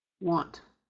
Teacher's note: We don't pronounce the N. What happens is we're nasalizing that A. And notice how the A comes before T.